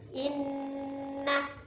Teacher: Sebelum masuk huruf na itu ditahan-tahan dulu sedikit, baru masuk huruf nanya. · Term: gunnah